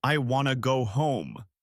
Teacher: The words want to become wanna.